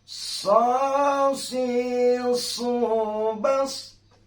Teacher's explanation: huruf sad ini harus berdesis seperti binatang ular, ya, harus berdesis dengan desisan terdengar seolah-olah kita mendengar suara ular.